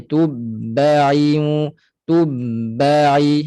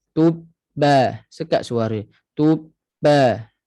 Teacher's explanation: Jangan mengalir suara semasa ba bersabdu. Okey, kerana dia bersifat dengan syiddah.